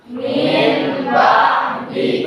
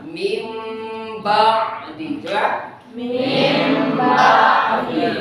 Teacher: Yang muncul itu kan bukan nun, bukan ba, tapi huruf mim. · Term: Iklab